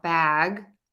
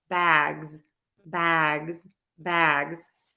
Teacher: it ends in a voiced G sound bag keep that voice on instead of saying an S say that z sound bags bags bags there is one exception to this and actually